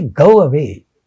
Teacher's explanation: So when we say go away, there between the two, there appears to be a wa sound. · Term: semi-vowel